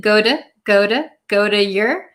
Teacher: the flap t is present go to go to go to your we don't pronounce it as your because that is too difficult for us to pronounce when we're speaking quickly.